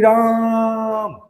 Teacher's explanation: 3 मात्रा, मतलब 3 गुना ज्यादा बोल रहे हैं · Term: प्लुत स्वर